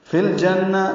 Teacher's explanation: لام ساکن پہ اظہار قمری ہے